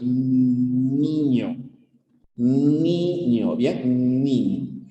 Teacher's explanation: Estos son los alvéolos. Cuando dices niño, ¿no? Niño, ahí tu lengua está chocando con los alvéolos. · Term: alveolar